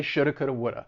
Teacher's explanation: they are going to reduce these modals should have could have would have or they would reduce it more and say shoulda coulda woulda